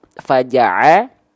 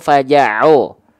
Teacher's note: Ainnya berharokat fathah ya. Maka ain dibaca ketika fathah vokal A atau vokal O.